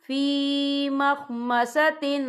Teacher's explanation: یا دیکھیں فی مخمصۃ، یہاں تا کے نیچے تنوین ہے، تنوین کے بعد جو ہے غین آ رہا ہے، اور غین جو ہے حروف ہلکی کا ورڈ ہے، تو ہم یہاں اظہار کریں گے، ہم اسے بنا غنے کے پڑھیں گے